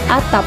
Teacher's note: Atap memiliki bunyi tak lepas pada akhir kata